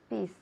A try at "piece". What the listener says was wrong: Yes, piece. Más largo. Piece. Bien, es verdad, sí que suena como esa otra palabra que tenemos en español, ¿ok? Pero con la S al final más larga. Peace. Peace. Ok, hay que alargar ese sonido al final. Peace. Peace.